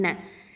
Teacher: இன்ன ஹம்சா அப்படிங்கிறது அகசல் ஹல்க்கு, இதுவும் கீழ் தொண்டை எழுத்து. நூனில் ஷத்தா இருக்கிறதுனால நம்ம அக்கமல் குன்னா கொடுக்குறோம்.